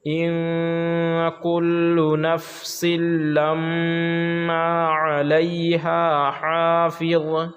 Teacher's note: ان پہ غنہ کریں گے، اخفا ہوگا اس لیے کہ نون ساکن کے بعد حروف اخفا کے 15 حرفوں میں سے کاف آ رہا ہے۔ میم پر بھی غنہ ہوگا کیونکہ میم پر جب تشدید ہوتا ہے تو غنہ ہوتا ہے